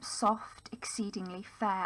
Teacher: there's the use here of the sibilance, for soft, and the fricative then for fair